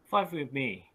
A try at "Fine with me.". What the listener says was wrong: Okay, or you can, your music is a little bit out. Can you say, da-da-da, fine with me?